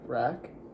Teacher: You kept your tongue down and way back in your throat.